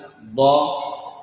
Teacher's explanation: طيب، أخذنا أيضا الضاد المتحركة. إذا قلت ضاء فإن الهواء يخرج من يمين اللسان، من يسارها، ومن أمامها